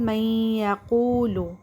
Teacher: Join the letters and make غنہ a long nasal sound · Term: ادغام